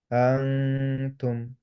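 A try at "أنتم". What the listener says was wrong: আ থেকে যখন নুনে যাচ্ছেন, তখন আপনার নুনটা যখন ধরবেন তখন টাংটা স্থির কিন্তু, হ্যাঁ? আপনার টাংটা তখনও মুভ করতেছে। অ্যা ফার্স্ট থেকে নুনে চলে যাবেন।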